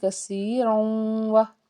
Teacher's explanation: را کے اوپر تنوین اور آگے واو تو یہاں پہ ادغام کا قاعدہ ہے